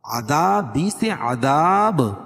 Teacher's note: اس لیے کہ حروف مدہ کے بعد سکون عارضی ہو تو اس کو مد عارض وقفی کہتے ہیں، اور وقف کی صورت میں با کے نیچے جو زیر ہے اس کو جزم سے بدل دیں گے تو یہاں قلقلہ ہوگا